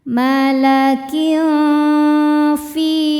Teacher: Karena ada tanwin kasroh menghadapi huruf fa. Cara bacanya tanwin disamarkan ke fa disertai bunyi dengung. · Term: ikhfa hakiki